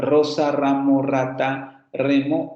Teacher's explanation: tenemos la líquida vibrante múltiple la que nosotros hemos visto